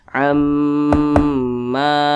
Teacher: jadi didengungkan 2 sampai dengan 3 harokat atau 2 sampai dengan 3 ketukan. Amma. Kemudian ma dibaca panjang. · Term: gunnah musyaddadah